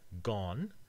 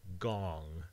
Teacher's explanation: english has a nasal velar here the ng for gong which is different from gone